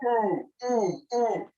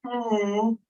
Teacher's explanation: It's in the back and it's high in my mouth. Ooh, and it's kind of tense.